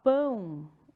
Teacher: Só que quando eu falo pão, o ar sai um pouquinho pelo nariz. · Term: nasal